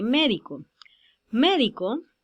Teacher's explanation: Médico, la sílaba tónica es me, o sea que no está ni en la última sílaba ni en la penúltima sílaba, sino en la antepenúltima sílaba